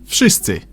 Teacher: should sound like V in Wódka, but it seems to soften up to an F.